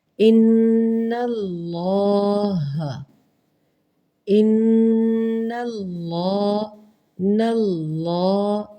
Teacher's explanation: اللہ کے نام سے پہلے زبر یا پیش، ان دونوں میں سے جون سی چیز آ جائے، لفظ اللہ کے نام سے پہلے زبر یا پیش آ جائے تو اس کو ہم نمایاں پڑھیں گے، اللہ کی لام کو، ان اللہ۔ دیکھیں نل میں نے لمبا نہیں کیا یا موٹا نہیں کیا، اللہ، ان اللہ، اسے کہیں گے اس میں جلالہ پر۔